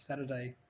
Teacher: Saturday has a vowel reduction in the middle of it